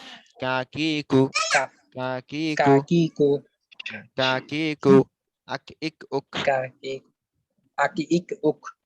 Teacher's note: জিহ্বার গোড়া থেকে একটু আগে বাড়িয়ে তার বরাবর উপরে তালুর সঙ্গে লাগিয়ে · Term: কাফ